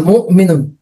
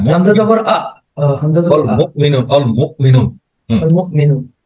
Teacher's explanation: মুমিনুন একটা ধাক্কার মতো লাগবে, কিন্তু পুরোপুরি ধাক্কা না, আপনার বাতাস বের হবে না, থেমে যাবে।